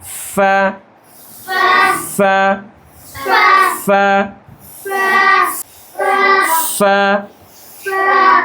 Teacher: সিফাত হচ্ছে হামস, বাতাস পরিপূর্ণ বের হবে।